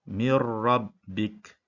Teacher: Kita tidak boleh baca min rabbik, tapi kita memasukkan di dalam huruf nun kepada huruf ra, mir, dan tanpa dengung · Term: idgham bila ghunnah